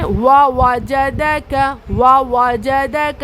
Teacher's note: یہاں پر تنوین کے بعد فا ہے، اسی لیے یہاں اخفا ہوا۔ نون کی آواز کو ناک میں چھپا کر پڑھنا ہے۔